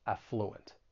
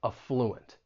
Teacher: you may hear some people stress that second syllable, and in that case, that first syllable is then going to have that schwa sound, that sound, affluent.